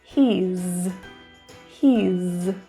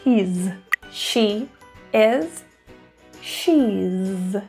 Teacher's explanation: link those together and contract them into the contracted form he's he's with a z sound for those is he's she is cheese now this also applies